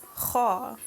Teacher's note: the tongue is raised when we pronounced KHaa